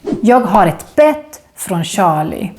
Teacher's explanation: the E in bett is short because it's followed by two consonants